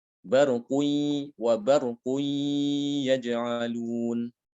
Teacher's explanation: Barqui ya. Barqui disertai dengan suara dari hidung ya. Dengungnya dari hidung ya.